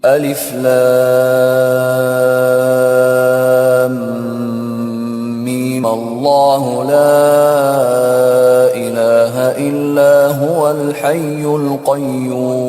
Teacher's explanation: انہوں جو میم پہ دوسرا مد تھا وہ کینسل کر دیا. کیوں؟ میم پہ زبر آ گیا. زبر دے کے انہوں اگلی آیت کو ملا دیے.